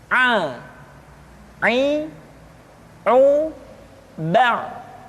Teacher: dikeluarkan dari tengah-tengah tenggorokan seperti kita mengucapkan huruf H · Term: huruf Ain